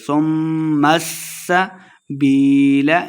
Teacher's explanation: میم کو سین کے ساتھ بھی ملا کے پڑھنا ہے، سین پہ سیٹی کی آواز آئے گی